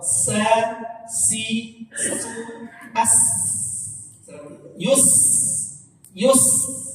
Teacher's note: lidah kita datar dalam mulut kita tuh, lidah kita datar tuh artinya istifal, nggak naik. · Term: huruf sin